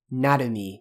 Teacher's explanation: make sure you're doing na, and make sure that you're not giving stress onto the R part.